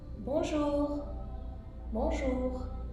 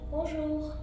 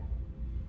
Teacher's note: In French, the R sound is weird. It's kind of like, think about like a cat purring, even if you've never had a cat.